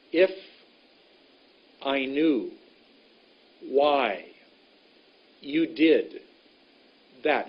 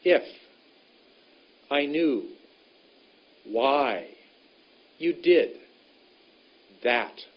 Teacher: the first word of a clump has only a very short length about 10 percent the second is much longer about eighty percent